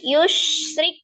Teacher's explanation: ro-nya berbaris kasroh ya, dibaca tipis ya · Jangan lupa sifat huruf shin-nya itu dia ada tafashi. Ya, jangan diputus.